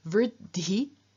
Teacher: dh is a sound that is both voiced and aspirated, and it passes on both its voice and its aspiration to the t at the beginning of t, changing that into dhi.